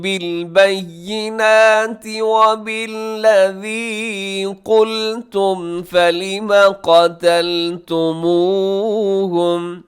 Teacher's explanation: یہاں پہ جو الفاظ حروف آ رہے ہیں اس میں سے قاف ہے اسے ذرا موٹا رکھیے گا